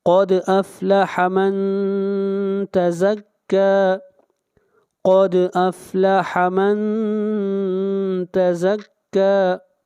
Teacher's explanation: قد افلح من تزکا، من کے اوپر اخفا ہوگا، آواز ناک میں جائے گی. تزکا کاف کے اوپر کھڑی زبر ہے، کاف کو کھینچ کر پڑھیں گے ایک الف کے برابر